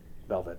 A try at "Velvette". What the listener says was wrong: You do know that her name is pronounced Velvet, right? Not Velvette. Yeah, but it's pronounced Velvet. Velvet. The normal spelling for Velvet.